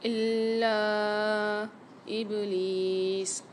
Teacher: با کے اندر قلقلہ ہوگا ابلیس میں، لام کے ساتھ یا مد آ رہی ہے، یہاں پر ایک الف مقدار کھینچ کے پڑھیں گے۔